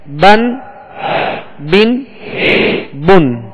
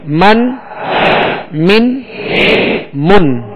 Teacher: با کو ادا کرتے ہوئے تر حصے سے اس کو ادا کریں اور میم کو ادا کرتے ہوئے خشک حصے سے ادا کرنا ہے.